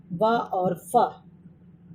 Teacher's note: इन व्यंजनों के उच्चारण में ऊपर के दांत नीचे वाले ओष्ठ का स्पर्शन करते हैं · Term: दंतोष्ठ